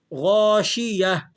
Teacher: 7 حروف ایسے ہیں جن کو موٹا کر کے ادا کیا جاتا ہے، تو ان میں سے غین بھی ہے، آپ نے اس کو موٹا کر کے پر کر کے ادا کرنا ہے۔ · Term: موٹے حروفوں